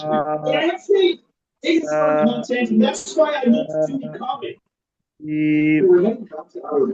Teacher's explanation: आ, आ, आ, में जुबान तालु की तरफ नहीं जाती, तालु खुला रहता है, यानी आवाज खुलकर निकलती है। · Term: इन्फिताह